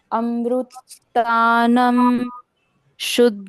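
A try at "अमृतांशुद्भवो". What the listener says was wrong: तानम नहीं, म का उच्चारण है ही नहीं। अमृतांशु,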